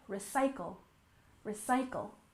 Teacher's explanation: we stress the second syllable recycle